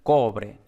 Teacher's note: Plata, tenemos nada especial por una preposición, como siempre, pues es átona, y ya el acento llega en cobre. Entonces en cobre tenemos esta B aproximante.